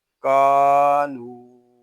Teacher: یہاں کاف کو ایک الف تک کھینچ کر پڑھیں گے کیونکہ یہاں پہ الف مدہ ہو رہا ہے. نون واو پیش نو، کانو.